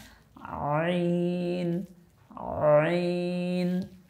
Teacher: আইন, আইন, আইন উচ্চারণ করার সময় মূলত হলকের মধ্য থেকে একটু গলার মধ্যে চাপ দিয়ে উচ্চারণ করতে হয়।